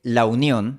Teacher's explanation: el fonema /u/ se realiza con la semivocal [w]. le phonème /u/ est réalisé avec la semi-voyelle [w]. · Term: diptongo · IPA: [aw]